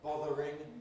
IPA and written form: ˈbɒðərɪŋ (bothering)